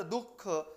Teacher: उच्चार होतो म्हणजे तुम्ही जर दुःख हा शब्द जेव्हा उच्चारतात तेव्हा तोंडातील जी काही हवा आहे ती एकदम सोडली जाते त्यातून विसर्गाचा उच्चार होत असतो